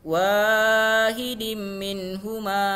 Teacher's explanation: Karena ada tanda tanwin kasrotain, yaitu baris dua di bawah bertemu dengan huruf mim. Nah, maka hukum bacaannya adalah idgham bigunnah, maka dia harus atau wajib berdengung